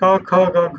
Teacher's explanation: there's a deep part of the oral cavity called velum. If you shut off the oral cavity briefly there, you get all the ka family sounds. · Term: velars